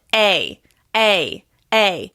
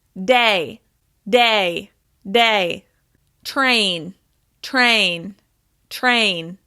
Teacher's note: my mouth is moving into the y shape when I pronounce this vowel sound